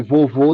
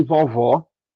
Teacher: a gente distingue vovô de vovó pelo timbre, porque a tônica é a mesma